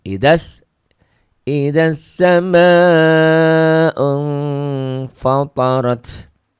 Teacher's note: matobinya tidak jadi panjang karena ketemu alif lam samsiyah ya, ketemu tasdid